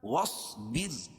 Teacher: واصبر، اور یہ صاد کو موٹا پڑھیں گے، واو کو ساتھ میں ملائیں گے، اور با را زیر بر، اور یہ را باریک ہوگی. کیوں کہ را ساکن سے پہلے زیر ہو تو را کو باریک پڑھیں گے، اور یہ را ساکن سے پہلے زیر ہے.